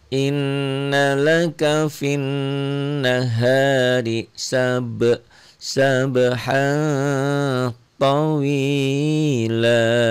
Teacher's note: 2 fathah dibaca 1 karena berhenti membacanya. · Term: mad iwad